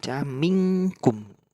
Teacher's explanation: dibaca minkum dengan samar-samar atau dengung dengan panjang satu alif atau dua harokat pada suara eng. Sebab suara nun mati menyambung dengan suara huruf kaf. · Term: ikhfa hakiki